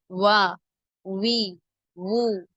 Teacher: பூவின் மொட்டு போன்று இரு உதடுகளையும் குவிப்பதால் உண்டாகும் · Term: வாவ்